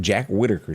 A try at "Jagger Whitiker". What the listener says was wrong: Jagger, yeah. Jagger. I think you cut your word short, yeah. Jagger Whitiker, yeah.